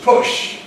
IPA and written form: pʊʃ (push)